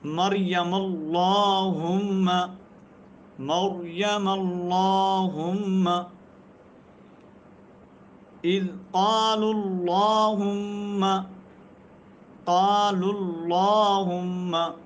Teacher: تو لفظ اللہم کیا ہو رہا ہے، پر پڑھا جا رہا ہے، لفظ اللہ کو پر پڑھا جا رہا ہے اللہم کے اندر